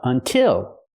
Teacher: It's the same sound because the stress is on the second syllable. Until has two syllables, but the stress is on the second syllable. So, we use the I sound like this is until.